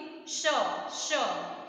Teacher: इसको हम बोलेंगे श, तालव्य, जीभ हमारी तालु से टच हो रही है